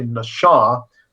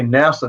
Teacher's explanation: All right, it's pronounced very different. The first consonant is the same as NASA, but the second consonant is very different. It's an SH sound rather than S sound, and the vowels are pronounced a bit different.